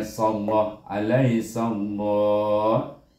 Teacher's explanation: oleh kerana sin baris di atas, maka kita baca dengan tebal lam ini. Bunyinya sallah alaihi sallah.